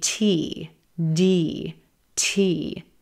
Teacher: TT the t consonant is another one of our air puff consonants TTT very subtle puff of air